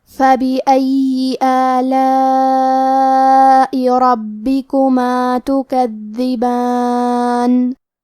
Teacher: حرف البا پہ تشدید ہے تو ہم 2 حرف کے برابر با کو پڑھیں گے. کلمت تکذبان میں دال کی ادائیگی زبان کے سر اور اوپر والے دانتوں کے اندرونی کناروں سے ہے. کیونکہ دال پہ تشدید ہے تو ہم 2 حرف کے برابر دال کو پڑھیں گے.